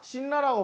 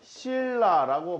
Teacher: 앞에 있는 니은이 뒤에 있는 리을을 만나서 리을이 되는 현상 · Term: 유음화